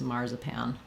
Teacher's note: marzipan, with the AR saying the R, first syllable stress, the Z saying a Z, pan, the last A saying the A, black cat vowel.